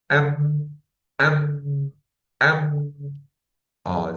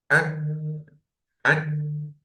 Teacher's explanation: So if we find noon or mim, in any case, with fatha, with kasra, with dhamma, with shadda, fatha and or dhamma, kasra, tanween, noon with sukoon, or mim with these sounds, we must make ghunna. This al-ghunna comes from the cavity, nasal cavity. And we must know that the time of al-ghunna is 2 beats or 2 harakas.